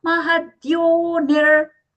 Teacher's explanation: Here the visarga is being pronounced as hafra. The reason is there is a visarga sandhi happening for our recitation purpose or the memorization purpose.